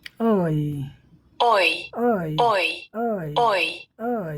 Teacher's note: How to make it is long sound, diagram में देखो, उसके बाद सुनो, तब बोलो। ओ से इह की तरफ हमारा टंग घूमता है।